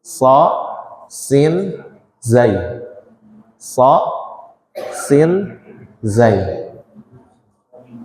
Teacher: makhraj ujung lidah dengan gigi seri bawah ujung lidah dengan gigi seri bawah ada tiga huruf yang keluar dari sini